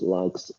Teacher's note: we can see that like ends in k, which is a voiceless sound